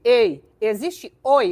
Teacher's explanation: um ditongo que você pronuncia com a boca totalmente aberta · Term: ditongo aberto